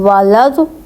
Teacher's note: اب آپ دیکھیں میں نے یہ نہ یہ 2 الف پڑھے نہ یہ لام پڑھے، لام کو میں نے ضاد سے ملایا ہے